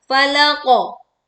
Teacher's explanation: qaf sukun ditekan dengan suara memantul dan tebal. Falaqo.